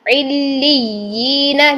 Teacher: لی کرتے ہوئے فوراً لام کو یا کے ساتھ ملائیں گے، تو اس کو فوراً ملانے کے لیے آپ نبر کریں گے، یعنی آواز کو فوراً ٹچ کریں گے کلیپ کی طرح، فوراً جیسے کلیپ کرتے ہیں نا اس طریقے سے.